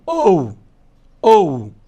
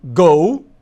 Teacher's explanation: you take your glide from o to u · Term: diphthongs